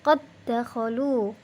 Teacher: ada dal sukun bertemu dengan dal fathah berharokat fathah, maka dibacanya qad dakhalu, qalqalahnya tidak nampak lagi. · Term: idgham mutamathilain